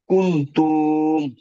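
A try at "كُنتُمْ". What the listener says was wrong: কুনতুম তু টান হবে না কুনতুম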